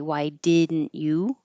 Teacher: So, in these examples, I have changed you to ya. And you can either not say the T at all and use the syllabic didn't